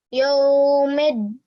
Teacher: So rather than just pronouncing it for a normal 2 seconds, because you're ending the verse after the madda letter, you can stretch your sound for even longer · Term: ya madda